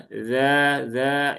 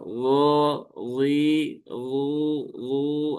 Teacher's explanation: dia huruf istifal dan dia di ujung lidah gigi seri atas. Jadi dia juga suaranya cenderung menurun ya. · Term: dzal